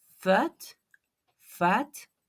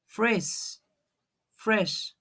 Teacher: The F and the V and the little V, okay? So, upper teeth and the lower lips. We are mixing them together.